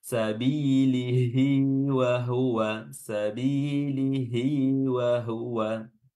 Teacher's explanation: Sabilihi wa huwa, sabilihi wa huwa. Baik, panjangnya dua harokat namanya mad silah qasirah